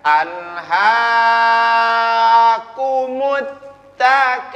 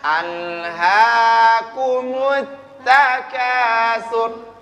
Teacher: Tidak boleh terlalu panjang. Mat tabi'i itu hanya 2 harokat, 2 ketukan. Tidak bisa dibaca alhaakumut takasur.